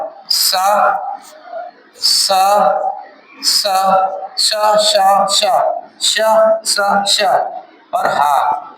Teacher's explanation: ये व्यंजन वे व्यंजन होते हैं जिनके उच्चारण में हमारे मुख से गर्म वायु निकलती है और जिनकी मात्रा जीभ रगड़ ज्यादा खाती है। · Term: ऊष्म व्यंजन